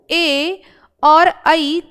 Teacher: तो ए और ऐ कंठ तालु से आते हैं।